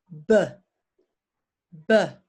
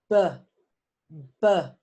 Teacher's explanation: you're still using your lips it's exactly the same as P except that you also use your voice feel your throat BB you can feel it in your throat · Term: voiced, Voiced